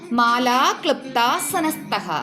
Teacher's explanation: നാക്കിൻ്റെ അഗ്രം പല്ലിൽ തൊടുവിച്ച് ഇംഗ്ലീഷിലെ ആപ്പിൾ എന്ന വാക്കിൻ്റെ അവസാനം വരുന്ന ആ ഒരു ല് ശബ്ദത്തിന് സമാനമായി വേണം ഉച്ചരിക്കാൻ, അല്ലാതെ ലൃ എന്നല്ല. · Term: പ്യുവർ വൗവലാണ്